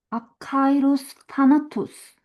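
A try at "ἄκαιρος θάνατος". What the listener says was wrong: 여기 딱 봐도 마찬가지로 정확히 하면은 크 발음이 아니고 끄 발음이에요. 숨소리가 안 들어가는 그리고 크는 키 있죠? X처럼 쓰는 그게 크 발음입니다. 키어 발음입니다. 그래서 정확히 하자면 아카이로스 타나토스 이렇게 되고 네. 저도 읽다 보면 빨리 읽다 보면 헷갈려서 그냥 편하게 읽게 되는데 정확히 하자면 그렇습니다.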